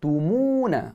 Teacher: Mu kita muncungkan mulut, kita panjang 2 harakat. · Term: ma asli